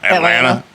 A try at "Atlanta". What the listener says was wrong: You pronouncing that T? We don't pronounce that. A-T-L-A-N-T-A? Nope.